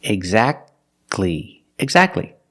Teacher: Don't pronounce the T. Exactly. You go from the k sound to the l sound.